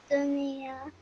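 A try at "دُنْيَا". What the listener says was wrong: Yes, but hold that nasal sound in your nose for 2 seconds. Dunya.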